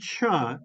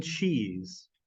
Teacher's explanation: the sound cha as in cheese is actually a combination of the sound ta and the sound Sha and they are crammed together until they are indistinguished inseparable but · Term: affricate